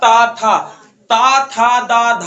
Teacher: आपकी जीभ जो होती है जाके आपके यहाँ मसूड़ों के पास नहीं, आप दांतों पे टच मारती है। ता था बोलिए, देखिए पूरा दांतों को छेक लेती है कि नहीं छेकती है, सर बिल्कुल छेक लेती है।